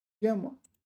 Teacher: okay, so I'm pronouncing it 愿 望. So I'm using the neutral tone, or at least I'm trying to.